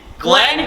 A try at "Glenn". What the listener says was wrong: It's 2 N's. Yes, but I could tell you didn't pronounce the second N.